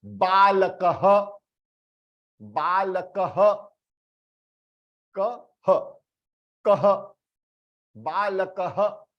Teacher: this visarga would become ha and half ha.